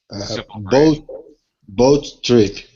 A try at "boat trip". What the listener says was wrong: actually you kind of pronounce the T twice you don't really need to do that you can just say boat trip